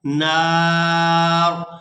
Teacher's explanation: या हमजा ज़बर या, यातियाना बिकुर्बानिन, बिकुर्बानिन ताकुलुहुन नार, यहाँ पर भी ता को हमजा साकिन के साथ मिलाएंगे तो झटके के साथ अदा करेंगे और यहाँ नून मुशद्दद पर गुना करेंगे और आखिर में रा जो है ये साकिन हो जाएगी वक़्फ़ की सूरत में